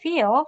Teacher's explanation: dark L resembles the articulation and acoustic quality of English sound U, and it's similar to the sound, Japanese sound U or O.